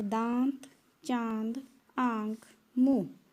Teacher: अनुनासिक का उच्चारण नाक व मुंह दोनों से होता है। तो यहाँ पर अनुस्वार का जो हम करते हैं उच्चारण वो नाक से होता है, और जो अनुनासिक है, चांद बिंदु है, उसका उच्चारण नाक और मुंह दोनों से होता है।